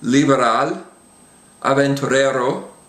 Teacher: between vowels the be and the V are much much softer